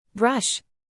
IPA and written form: brʌʃ (Brush)